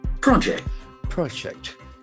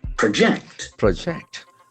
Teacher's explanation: If it is a noun, the accent for the first syllable. Project. Project. If it is a verb, the accent shifts to second syllable. Project. Project.